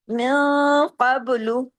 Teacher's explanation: نون ساکن کے بعد قاف آ گیا، اخفا ہوگا. قاف ہیوی لیٹر ہے، اخفا ہیوی ہوگا، قاف بھی ہیوی پڑھا جائے گا. · नून साकिन के बाद कफ आ गया इफा होगा कफ हैवी लेटर है इफा हैवी होगा काफ भी हैवी पढ़ा जाएगा उसके बाद जो बा है उस